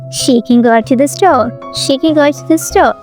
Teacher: go and store is content words which are stressed, but she, can, to, the are function words which are unstressed.